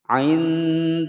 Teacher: lafadz jalalah sebelumnya kasroh dibaca dengan tipis. Dillahi bukan dillah.